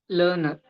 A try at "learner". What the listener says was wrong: Learner. Learner. It's not learner. The first R is silent. The first R is silent. The second R is what you're saying. So it's learner. Learner.